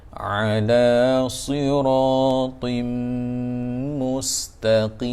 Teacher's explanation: rapatkan bibir mulut bila kita sebut siratim, dengung 2 harakat